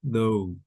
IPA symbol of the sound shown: əʊ